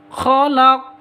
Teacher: Qalqalah kubra seperti ini. Qafnya menjadi sukun berada di waqaf, berarti qalqalah kubra.